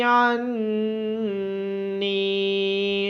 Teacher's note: عین کے بعد نون مشدد ہونے کی وجہ سے نون پہ غنہ کیا جائے گا اور نون کے بعد یا مدہ ہونے کی وجہ سے نون کو لمبا کیا جائے گا